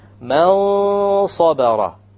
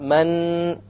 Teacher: It's not a clear noon. This is the point of ikhfa. It is hidden behind the letter after it.